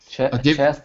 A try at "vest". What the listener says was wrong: Not a chest, almost. Sounds like chest, but it begins with a V. V like violet.